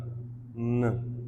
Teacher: it's a nasal sound, so passage of air is through our nose